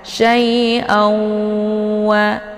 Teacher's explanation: cara bacanya didengungkan ya. Jadi tanwinnya dimasukkan ke dalam huruf waw ataupun dileburkan sambil dibaca dengung ataupun ditahan. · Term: idgham bi ghunnah